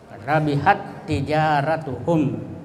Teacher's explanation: Kemudian dua huruf yang sama, baik sifat maupun makhraj, ya sama karena sama hurufnya. Jadi cara membacanya itu dimasukkan huruf pertama pada huruf kedua atau ditasdidkan. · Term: idgham mutamasilain